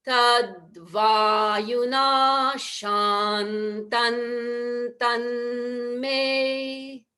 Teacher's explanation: But if you don't want to take a breath, then we need to change to the dental nasal at the end of shantam. So it would be tad vayuna shantan tan me.